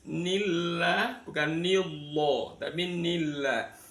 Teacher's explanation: lafaz Allahnya wajib dibaca tarqik, dibaca tipis